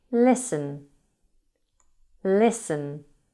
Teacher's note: Listen has a silent T.